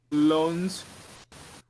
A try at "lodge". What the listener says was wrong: No N. Lodge.